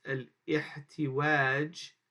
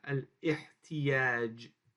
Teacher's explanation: The waw gives way to become a ya when the preceding letter has a short vowel kasra.